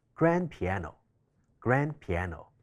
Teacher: grand▁piano▁中間嘅▁d▁省略咗之後就會變成▁grand▁piano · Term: 省音